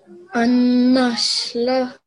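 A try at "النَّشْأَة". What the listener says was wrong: It's not, sorry, did you say la or ah? Okay, what letter is this here? Alif, excellent. An-nash'ah.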